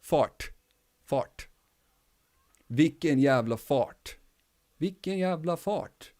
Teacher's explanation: They kind of mesh together and make the sound that goes like almost like a Street Fighter punch. Roll tip of the tongue at the roof, at the front roof of your mouth.